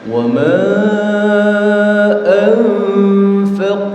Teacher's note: Qafnya itu memantul dan qaf itu termasuk di antara huruf-huruf yang harus dibaca tebal.